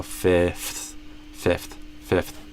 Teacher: F is with your lower lip touching your upper teeth, and a TH is with your tongue touching your upper teeth · So you're kind of substituting, you're switching which thing is touching your upper teeth. You go from lower lip to tongue. And you do that at the end of the word.